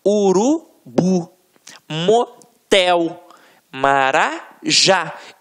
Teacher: na hora da pronúncia, de forma mais aguçada, você vai perceber que realmente a pronúncia da última sílaba ficará mais forte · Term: oxítonas